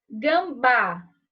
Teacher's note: a sílaba tônica está no final e é terminada em a por isso ganha o acento agudo